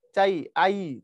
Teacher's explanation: ই যখন বলছি তো পুরোপুরি উচ্চারণ করিনি, অর্থাৎ শেষের থেকে টেনে লম্বা করতে পারি না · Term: অর্ধ স্বরধ্বনি